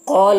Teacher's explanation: قال القاف، یہ حروف مستعلیہ میں سے ہے، اسے پور پڑھنا ہے، اور یہاں پر الف سے پہلے قاف کے اوپر زبر ہے تو الف مدہ ہوا، اسے ایک الف کے برابر کھینچیں گے